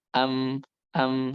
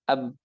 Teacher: Kalau ba kan agak agak nempel dikit ya ab. Tapi kalau kalau mim itu nempel nempelnya lebih ringan lebih ringan daripada ba.